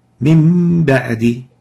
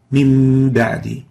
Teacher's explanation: We see that the noon is in gray because it's not pronounced, and on top of it is a small meme in green indicating iqlab from the noon into the meme, exchanging the noon into meme and giving ghunna for the meme